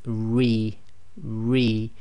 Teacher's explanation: the letter ra with casra behaves as a light letter make sure you smile while while saying the raw with casra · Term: light sound